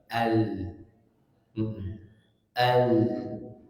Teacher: Al. Jadi dia lidah itu jangan hanya ujung lidahnya, tapi termasuk pinggir-pinggirnya menempel ke langit-langit atas. Al, bukan al, ya, bukan al tapi al. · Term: makhraj lam